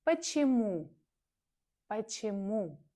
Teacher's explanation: The stress is on the third syllable.